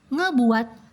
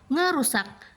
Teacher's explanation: perubahan fonem konsonan m menjadi fonem eng di awal kata